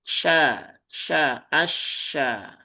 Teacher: Pastikan jangan mantul sh s ya cukup sya sya asya. Pastikan dia yang membedakan dengan sin itu bukan bukan monyongnya ya bukan monyongnya tetapi adalah sifat tafasyinya ya.